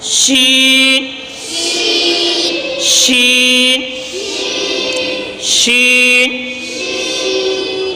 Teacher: شین شین شین، اوپر ہم نے جیم کا جو مخرج پڑھا ہے وہی مخرج شین کا بھی ہے، یعنی جس مخرج سے جیم ادا ہوتا ہے اسی مخرج سے شین بھی نکلتا ہے، اور وہ کیا مخرج تھا؟ زبان کے درمیان اور اوپر کے تالو کے درمیان سے شین بھی ادا ہوتا ہے، جیم بھی ادا ہوتا ہے۔